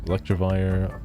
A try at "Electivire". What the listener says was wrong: There's no R, but yeah.